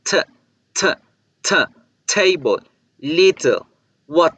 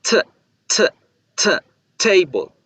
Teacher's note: Debo generar una explosión con la T para hacerla diferente también de la pronunciación normal del español.